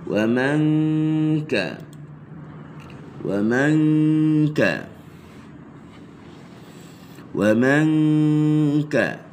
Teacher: Selesaikan dengung dua harakat di sisi huruf kaf